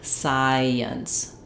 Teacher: As we move from that I vowel into the ints, we end up with a little hidden y sound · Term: vowel to vowel linking